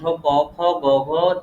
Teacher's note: প্রথম দুইটা হচ্ছে অঘোষ, পরের দুইটা হচ্ছে ঘোষ। অল্প প্রাণ মহাপ্রাণ, অল্প প্রাণ মহাপ্রাণ।